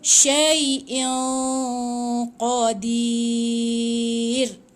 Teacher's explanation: Tapi tanwin ni dia kena baca dengungkan tebal dekat qaf. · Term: ikhfa hakiki